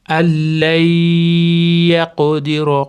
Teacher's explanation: Bu nunni yo'ga kirgizib g'unna qilib ushlab turamiz. Allay yaqdiro qof qalqalasini beramiz. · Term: g'unnali idg'om